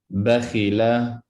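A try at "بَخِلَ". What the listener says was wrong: Good, but don't say la. Don't make it long.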